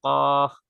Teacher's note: জিহ্বার গোড়া তার বরাবর উপরের তালের সঙ্গে লাগে